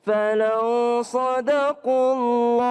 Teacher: Iya, jadi kalau ada sebelum lafaz Allah ini falau sadaqullah, Allahnya tebal.